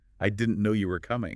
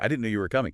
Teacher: try it with a little lift, a little emphasis on no and coming